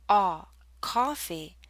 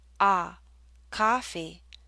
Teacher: the lips are more rounded and the tongue is pushed backward more